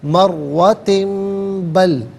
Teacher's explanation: اول مرتن، تا کے نیچے دو زیر کی تنوین، اس کے بعد با آ رہا ہے تو تنوین کو میم سے چینج کر کے میم کی آواز کو غنّے کے ساتھ ادا کریں گے